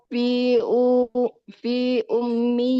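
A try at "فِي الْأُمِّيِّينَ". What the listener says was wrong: fil, tidak fi. Fil fil ada lam.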